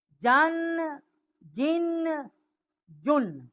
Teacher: شین اور جیم جو ہے ان کو شجریہ حروف جو ہے وہ کہا جاتا ہے. ان کا مخرج وسط زبان اور اس کے مقابل اوپر کا تالو ہے